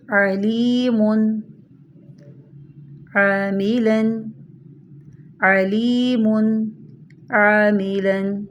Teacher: عین کی آواز درمیان حلق سے رگڑ کھا کر نکلتی ہے